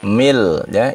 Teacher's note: jangan min la, mil ya, idgham bila gunnah